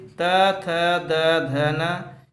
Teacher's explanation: त थ द ध न, इसका उच्चारण स्थान दोस्तों दंत है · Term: त वर्ग